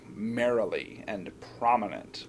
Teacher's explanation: where the accent Falls at the beginning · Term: dactyl